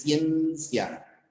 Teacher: Ciencia, cerrada con abierta, doble diptongo. Porque la I no lleva fuerza de voz.